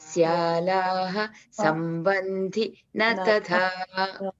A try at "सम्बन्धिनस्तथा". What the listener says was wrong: Only two words are clubbed here. In previous line, tathaiva, and last words, this one. Sambandhinastatha.